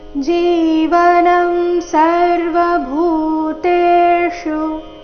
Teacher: ಚರಣದ ಕೊನೆಗೆ ಇರೋ ಶು ರಸ್ವ ಬರಬೇಕು